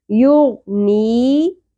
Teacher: آیت نمبر 11 وَمَا یغنی غین پر ہوگا اور نون زیر کے ساتھ یا ساکن حرف مدہ ہے ایک الف کے برابر کھینچیں گے مقدار پوری کرنی ہے